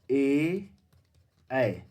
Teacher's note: ए ऐ कंठ तालव्य है